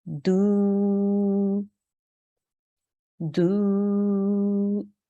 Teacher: if we have an inverted Dhamma on the dal, we have to now stretch that sound for 2 seconds. So it would be do, do.